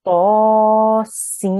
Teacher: But instead of saying seen, you won't say the n at the end. We will join it straight into the meme and we'll say seem. So we'll hear the m sound instead.